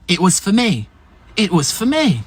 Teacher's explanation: se dira fe en forme faible